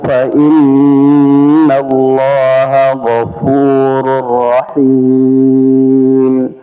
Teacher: makhrajnya dari bibir bawah ketemu dengan gigi seri ya atas. Fa ini tahu fa inna, kemudian gofu ya, jadi bukan gafuru.